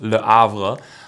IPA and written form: lə avʁ (Le Havre)